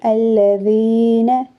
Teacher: یا مدہ کی ادائیگی ہو رہی ہے اور نون کو جلدی سے پڑھیں گے۔ الذین، الذین، یہ پڑھنا غلط ہے، نون کو کھینچنا نہیں ہے۔